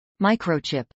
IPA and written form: ˈmaɪkroʊˌtʃɪp (microchip)